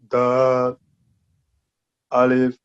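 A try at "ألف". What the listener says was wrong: Now, alif in a would be only 1 second, not a, alif. Quickly, A-L-I-F, alif.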